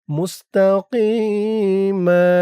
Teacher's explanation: এত চিহ্নত অক্ষ করার কারণে মিমের উপরে ২ জবর থেকে ১ জবর রিমুভ হয়ে গেছে। ১ জবর দিয়ে পাশে খালি আলিফ ধরে এক আলিফ টান দিয়ে পড়া হয়েছে। এটাকে বলে মদ্দে এওয়াজ।